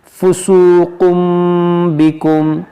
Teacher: بعد با ہے، اس لیے یہاں پر اقلاب کریں گے ہم، اس کو فسوقن بکم نہیں پڑھیں گے بلکہ فسوقم، اس میم کو پڑھا جائے گا